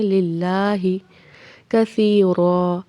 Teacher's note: اللہ تعالیٰ کے لام کو باریک پڑھنا ہے، ہا کو تیزی سے پڑھنا ہے